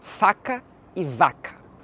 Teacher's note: As palavras faca e vaca possuem sons muito parecidos, são do mesmo ponto de articulação, mesmo tudo. A única coisa que muda é o seu uso das pregas vocais. Em uma você usa e na outra não.